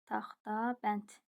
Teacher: Söz deməli kar samitlə başlayıb, kar samitlə bitir. T, karla başlayıb, karla bitir.